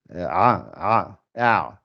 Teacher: La aïn, c'est le milieu de la gorge. Ça fait a. Et on avait dit, si vous voulez la sortir bien, au moment de la prononcer, vous écartez les mâchoires.